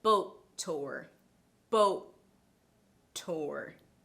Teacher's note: I held the stop part of the t sound a little bit longer than usual before letting out that plosive, right? That is because we have one word that ends in the t sound and the next word begins with that same t sound.